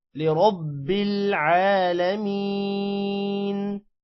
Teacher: را کو موٹا کریں گے، عین پر کھڑی زبر ہے، تھوڑا سا لمبا ہوگا